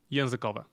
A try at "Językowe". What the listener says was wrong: Językowe. Yeah, don't pronounce the final vowel fully. It's not like it's still just as equal of a vowel as any other vowel in the word. You can't give it less attention.